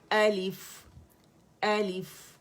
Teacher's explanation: الف حمزہ جو ہے وہ فار تھروٹ سے ہی نکلے گا, ڈیپسٹ پارٹ سے, ٹھیک ہے, اقص الحلق سے.